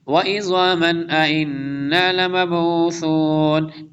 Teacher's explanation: तनवीन के बाद हमज़ा आ रहा है, इज़हार होगा